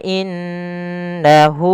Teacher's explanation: pada lafal hu ada mad sila qasirah yang di mana hunya dipanjangkan sepanjang dua harakat